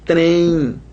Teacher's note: a gente tem um E nasalizado e um I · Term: ditongo nasal